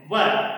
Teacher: ऊपर वाले दांत नीचे वाले होठ को स्पर्श करते हैं। व ऊपर के दांत नीचे वाले होठ को स्पर्श करते हैं। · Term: दंतोष्ठम